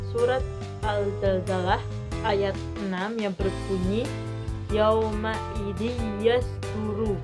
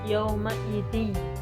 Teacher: Yauma idi itu ada kasroh tain bertemu dengan huruf ya, yauma idi. Jadi kasroh tainnya melebur masuk ke huruf ya.